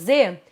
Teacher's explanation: surdo não vibra as cordas vocais se eu fizer o z Z é um fonema sonoro então o que que significa que tá vibrando as cordas vocais